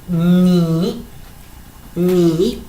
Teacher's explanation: tenemos la consonante y la vocal, y el tono es 3